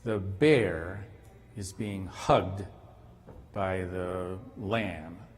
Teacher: We emphasize bear, hugged, and lamb. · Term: prosodically stress